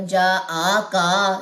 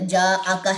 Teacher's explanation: آ کو لمبا نہیں کرنا، کاف کی زبر کو لمبا نہیں کرنا